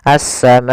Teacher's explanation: Maka apabila ada hamzah datang setelah huruf mad dan hamzah tersebut berada dalam satu kata, maka dinamakan dengan mad wajib muttasil. Panjangnya adalah 4 harokat, maka kita panjangkan ma-nya 4 harokat.